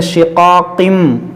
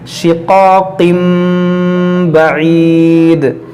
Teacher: یہاں پر دیکھیں تنوین کے بعد با ہے تو یہاں پر ہوگا اقلاب. اس کو پڑھیں گے شقاقم, غنہ کریں گے. اس کو شقاقن بعید نہیں پڑھیں گے, شقاقم بعید.